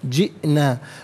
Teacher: حمزہ ساکن، اسے جھٹکے کے ساتھ ادا کیا جائے گا